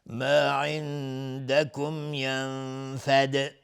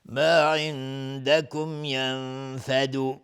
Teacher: دال قلقله میخواد چون ساکنش کردیم